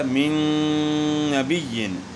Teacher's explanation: تو نون کا نون میں ادغام ہوا مع الغنہ، یعنی غنے کے ساتھ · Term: ادغام مع الغنہ